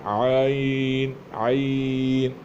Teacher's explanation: عین یہ حلق سے ادا ہوتا ہے اور اس کی ادائیگی بھی نرمی سے ہوتی ہے